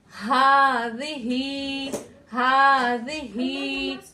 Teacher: तो दोनों हा को हमें कहां से अदा करना है? अक्सा हलक से अदा करना है